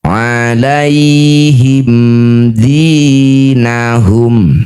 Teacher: liuruhum waliyalisu alaihim dinahum alaihim di mim sukun bertemunya bukan mim bukan juga ba disebut bacaan namanya izhar syafawi baca jelas mim sukun rapatkan bibir dengan sempurna, tidak usah dengung.